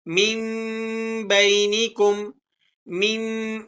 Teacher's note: اب یہاں پر نون ساکن اور اس کے بعد حرف با آ گیا، تو آپ نے یہاں نون ساکن کی آواز کو میم سے بدل کر پڑھنا ہے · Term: اقلاب